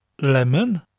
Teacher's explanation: in English lemon it almost sounds like one syllable but in Welsh lemon the lemon you distinctly hear the two